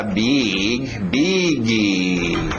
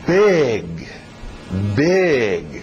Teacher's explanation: Vamos com I aberto, som de E.